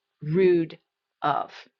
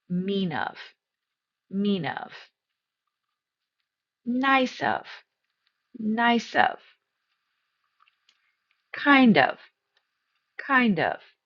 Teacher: It's not two stressed syllables. Of is going to be unstressed. So, it's going to sound like rudov.